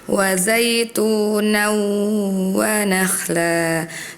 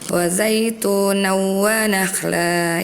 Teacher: Harusnya ditahan dulu dua harakat disertai dengan dengung ya. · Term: idgham bighunnah